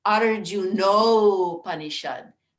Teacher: ah followed by uh creates o